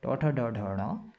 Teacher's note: मूर्धा से उच्चारण होता है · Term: मूर्धन्य